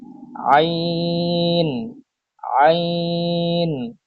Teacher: কণ্ঠনালীর মধ্যখান হইতে উচ্চারিত হয় আইন